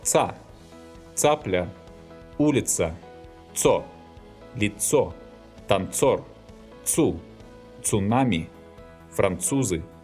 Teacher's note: This consonant is hard in all positions and has no soft pair.